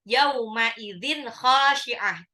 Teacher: Tanwin ketemu kha itu dibaca jelas, izhar